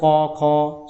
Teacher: কি না আমাদের যে 5টা বর্গীয় ধ্বনি আছে সেই 5টা বর্গীয় ধ্বনির 5টি উচ্চারণ স্থান আছে। অর্থাৎ ক বর্গের ধ্বনিগুলো উচ্চারিত হয় কণ্ঠে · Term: কণ্ঠাধ্বনি